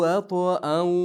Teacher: Hiya ashaddu va to'da qalqala qilishimiz kerak